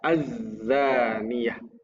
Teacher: Alif lam mati yang bertemu dengan salah satu huruf syamsiah dibaca menjadi lebur sehingga bunyi alnya tidak dibaca jadinya azzaniah. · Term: alif lam syamsiyah